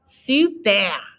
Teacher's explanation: Notice that R again is in the back of your throat.